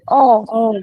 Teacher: Kalau fathah tipis bunyinya A. Kalau fathah huruf tebal bunyinya O